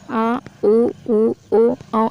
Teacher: जब भी हम आ बोलेंगे तो आवाज कंठ से गले से निकलती है